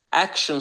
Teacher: action sözündə a hərfi ə olaraq oxunur